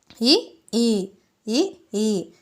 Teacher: ఇ ఈ లు వచ్చేసరికి సమృతాలు పూర్వ స్వరాలు తాలవ్యాలు